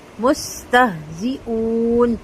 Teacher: مستہزئون تمام حرکات کو بہت معروف کر کے پڑھنا ہے، اس کو مستہزئون نہیں، مستہزئون زیر الگ معروف اور حمزہ کی جو آواز ہے وہ بالکل الگ سے نکلے گی، تحقیق کے ساتھ بالکل کلیئرلی حمزہ کو پڑھیں گے